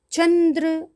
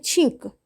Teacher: અનુનાસિક મેં તમને આગળના વિડીયોની અંદર છે એ અનુસ્વારમાં ચંદ્ર અને છીંક એ બે વચ્ચેનો તફાવત સમજાવ્યો હતો કે ચંદ્ર બોલતી વખતે આપણે તીવ્ર રીતે અનુસ્વારને બોલવો પડે છે. બરાબર. અને જ્યારે છીંક બોલીએ ત્યારે એ અનુસ્વાર એકદમ કોમળ છે.